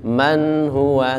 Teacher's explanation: nunnya itu idhar, jelas, tidak boleh mantul